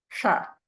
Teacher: the tip of the tongue is pointing up towards the palate